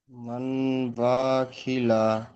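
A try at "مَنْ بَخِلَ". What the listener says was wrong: বা টান হয়ে যাচ্ছে, ক্ষয়ও টান হয়ে যাচ্ছে, এখানে গুন্না হচ্ছে না। মাম বাখিলা, মাম বাখিলা।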